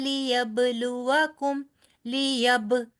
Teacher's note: با پہ کلکلا کرنا ہے آپ نے، اور یہ کلکلا واضح ساؤنڈ ہونا چاہیے